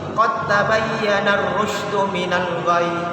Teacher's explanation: masukkan dalnya itu, masukkan ke ta, maka langsung seakan-akan ditasydid dalam bacaan